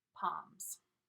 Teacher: Notice the L in palm is silent. We don't pronounce it.